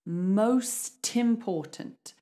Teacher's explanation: So the T actually goes in front of important. And this is the same with most words where you've got a consonant and then a vowel straight after it. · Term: linking sound